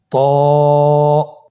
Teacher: হরফটা উচ্চারণের সময় অবশ্যই মোটা করতে হবে এবং উচ্চারণ করার সময় এক আলিফ টেনে পড়তে হবে